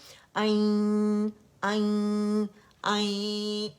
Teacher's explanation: अन अन अन, ये गुन्ना आप लोगों ने फील करना है नाक में